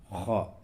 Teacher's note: یہ بڑی ہا یہ وسط حلق یعنی حلق کے درمیانی حصے سے نکلتی ہے، اور خا یہ ادنائی حلق یعنی حلق کا منہ کی طرف والا حصہ، جو منہ کی طرف والا جو حصہ ہے حلق کا، اس سے خا نکلتی ہے، خا۔